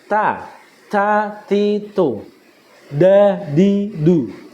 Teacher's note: Bunyi huruf ta, da, bo keluar dari ujung lidah yang bertemu dengan gigi bagian atas